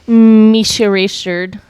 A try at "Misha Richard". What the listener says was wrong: It almost sounded like you were saying Michelle.